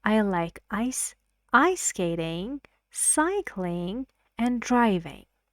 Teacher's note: So rising, rising, and the last word on the list has falling intonation. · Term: intonation in a series